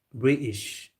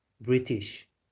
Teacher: You won't hear the T, British, but the USA you would hear the T, British.